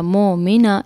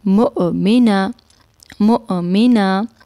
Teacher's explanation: حمزہ کے اوپر ساکن ہے تو ہم نے اس لفظ کو جھٹکا دے کر پڑھا. ہم نے اس طرح نہیں پڑھا مومنہ، اس طرح نہیں پڑھا، ہم نے پڑھنا ہے مؤمنہ مؤمنہ.